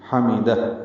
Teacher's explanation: ہا میم جلدی پڑھیں گے، دال کو ہا سے ملا دیں گے. ہا ساکن ہے، اس پہ ہمس ہوتا ہے، یعنی سانس جاری رہتی ہے اس کے پڑھتے ہوئے.